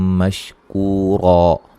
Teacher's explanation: دو زبر آ جائیں اینڈ پہ تو وقفاً کیا کرتے ہیں، الف مدہ میں تبدیل کر دیتے ہیں